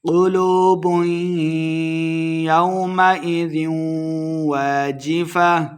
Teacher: قاف کو موٹا پڑھیں گے، واو مد ہے، 2 حرکات لمبا کرنا ہے۔